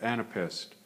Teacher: So an, na, and then pest, and again, if you put your hand under your chin, you can feel the last syllable. The jaw drops a little bit more.